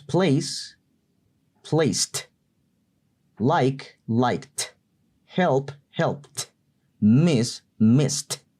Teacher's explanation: el Ed al final se pronuncia como t seca